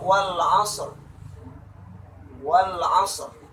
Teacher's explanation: maka penyebutan huruf ro ditebalkan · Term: ro yang tebal